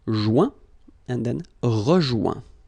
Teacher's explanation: when you get this O-I-N combination of letters, you get the sound ouin.